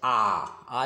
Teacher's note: अब जैसे विवृत स्वर में होता है, विवृत मतलब खुला, यानी पूरा खुला रहेगा मुंह